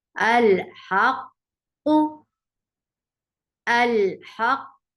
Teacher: منہ اور جبڑے کی کوئی حرکت یا شکل شامل نہیں ہوئی اور قلقلہ کے بغیر اس کو ادا کر دیا گیا